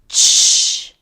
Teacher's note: affricate, stop and then a fricative, voiceless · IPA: /tʃ/